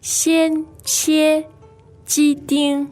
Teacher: So you have four items there, each of which is first tone now.